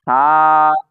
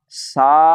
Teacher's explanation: فا میں سیٹی بالکل نہیں ہوتی۔ فا، سا غلط۔